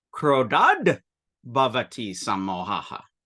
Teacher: when you have an unvoiced ta and it comes into contact with a voiced consonant like ba, the ta turns into a da.